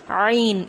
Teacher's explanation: یہاں پر جو عین ہے وہ حلق کے درمیانی حصے سے ادا ہو رہا ہے، ٹھیک ہے۔ عین، اس طرح سے اس کو ادا کرنا ہے۔